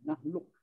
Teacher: Jadi kita hilangkan qaf ke dalam kaf. Itu maksudnya dan makna idgham.